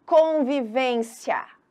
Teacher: o i ele quase some na hora da fala